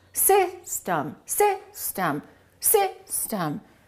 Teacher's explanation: The first syllable is stressed, the second syllable is reduced. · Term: reduced vowel